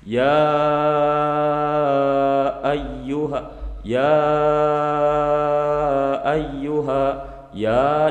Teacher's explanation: dibaca panjang Karena disana ada Mad kemudian kedepannya yg ada Hamzah tapi antarakata ia dan Ayuha itu dua kata yang berbeda maka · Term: Mad Jaiz munfasil